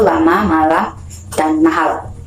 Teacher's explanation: dihasilkan dengan menempelkan daun lidah pada gusi dan mengeluarkan udara melewati samping lidah. Sementara itu pita suara dalam keadaan bergetar, sama seperti huruf R tadi yang konsonan R itu ya. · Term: konsonan lateral alveolar L